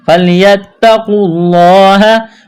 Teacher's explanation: فَلْيَتَّقُوا اللَّهَ، تا میں سختی کریں گے، قاف کو موٹا کرنا ہے، واو اور الف کو نہیں پڑھیں گے، لفظ اللہ کے نام سے پہلے پیش ہے، لفظ اللہ کے نام کو موٹا کرنا ہے